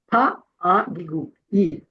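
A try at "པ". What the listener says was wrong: À l'épellation, c'est pas agigui. À la lecture, c'est pas agigui. À la lecture, c'est paix. bien d'accord, hein, paix.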